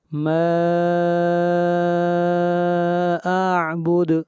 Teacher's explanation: ما کے اوپر مد منفصل ہے، اس کو 3 الف کے برابر لمبا کریں گے. اور اعبد دال کے اوپر قلقلہ، آواز کو ہلائیں گے.